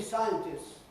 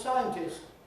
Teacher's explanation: with a long [ss], losing the [t] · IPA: ˈsaɪəntɪss